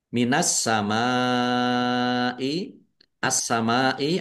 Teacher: alif lam syamsiyah karena tidak dibaca langsung masuk ke huruf berikutnya yaitu sin